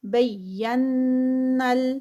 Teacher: قد بینا الآیات، قد قاف ہیوی، دال کا قلقلہ. بینا، یہاں پر نون مشدد ہے غنہ اور یہ نون آگے اس کے ساتھ ملے گا